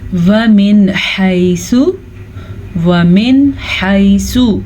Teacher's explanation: وَمِنْ حَيْثُ، وَمِنْ حَيْثُ نون ساکن کے بعد ہا حروف ہلکی میں سے ہے تو ہم نون ساکن کو ظاہر کر کے پڑھیں گے اور بغیر غننے کے پڑھیں گے